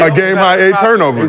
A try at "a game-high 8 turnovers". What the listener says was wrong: You didn't put the emphasis on the 8.